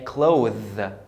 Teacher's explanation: The TH is pronounced as voiced TH, as in there.